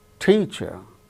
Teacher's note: out of these two syllables the first syllable is stressed